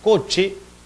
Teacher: oclusión con fricción el caso de la palabra coche s ch vemos que es en parte bloqueado y luego liberado con una cierta fricción